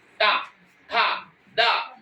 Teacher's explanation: अब जब ता बोलेंगे, ता जब बोलेंगे तो जीभ आपकी दांतों में टच करेगी